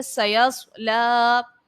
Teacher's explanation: صاد حرف مستعلیہ کا ہے، اس کو پر پڑھیں گے، لام کو کھینچ کر ادا کریں گے